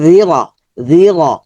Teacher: তারপর হচ্ছে র, লি তুং জি র, রটা মোটা হবে কেন, রর উপর জবর আছে